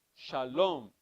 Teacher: the accent is at the end of the word